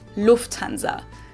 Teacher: In English, people usually say Lufanza, but in German, we say Lufanza. So, the emphasis on the first syllable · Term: emphasis is on the first syllable